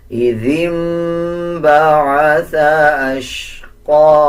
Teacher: جب نون کے اوپر جزم آ رہا ہو اس کے بعد با آ جائے تب بھی غنہ کیا جاتا ہے اور غنے کی آواز کو ناک سے نکالا جاتا ہے